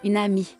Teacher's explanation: El enchaînement tiene lugar cuando una palabra que termina con una consonante pronunciada va seguida de una palabra que empieza por vocal. Y la consonante y la vocal se combinan en una sola sílaba